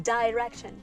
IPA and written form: dɪrɛkʃən (direction)